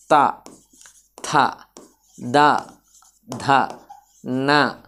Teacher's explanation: దంతాల సహాయంతో పలికే అక్షరాలని దంత్యాలు అంటాడు